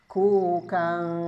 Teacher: Ikhfanya ketika bertemu huruf kaf ini bukan kau tapi ang sempurna. Ku kang disertai dengung pasti.